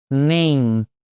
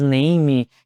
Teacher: o E ele não é pronunciado, o último som é do M, ou seja, fecha a boca, name. Assim você vai evitar aquele izinho a mais, name, que é bem comum, bem ruim a pronúncia do brasileiro.